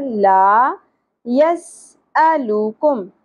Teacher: سین سیٹی کے ساتھ, حمزہ جھٹکا کے ساتھ, سنگل حرکت ہے, زیادہ نہیں کھینچیں گے.